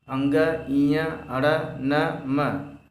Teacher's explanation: जब हम बोलेंगे तो हमारा आवाज़, हमारी नाक से कुछ भी हवा निकलता है, इसलिए इसे हम नासिक कहते हैं। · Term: नासिक्य